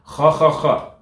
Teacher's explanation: Kha sound. It's a vibration from the roof of your mouth.